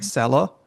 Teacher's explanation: So short climbing accent is selo